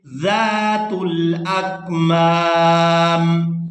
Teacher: یہاں پر آیت مکمل ہو رہی ہے، وقف کریں گے تو وقف کی صورت میں میم جو ہے یہ ساکن ہو جائے گی۔ پہلی میم کو کھینچتے ہوئے دوسری میم ساکن کے ساتھ ملائیں گے